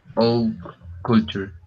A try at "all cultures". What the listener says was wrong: All cultures is good.